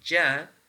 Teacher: When we say ja, so the air which is coming out from the lungs is blocked off somewhere in the middle part of our mouth. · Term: obstruent